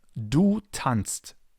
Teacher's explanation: If tanzen would be a regular verb and would follow the normal rules, the second person singular would be tanzt with zst. But because zst is something that nobody can really pronounce, people made it easier and left out the s